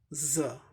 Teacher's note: ज एस्पिरेटेड हो गया, यानी कुछ ज़्यादा ब्रेथ दे के बोलना पड़ता है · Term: एस्पिरेटेड ज